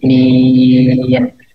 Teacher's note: dijelasin nunnya ya. ujung lidah bertemu langit-langit